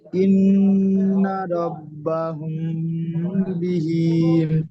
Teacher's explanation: নুনের উপরে তাসদিদ এসেছে, নুন তাসদিদ গুণনা করা ওয়াজিব, সুতরাং এক আলিফ পরিমাণ গুণনা নাকে তুলে গুণনা করে পড়তে হবে নুন তাসদিদ। নুনের উপরে নুনের উপরে জাবার এসেছে, জাবারটি হারাকাত, হারাকাত তাড়াতাড়ি পড়তে হয়, টান দেওয়া নিষেধ।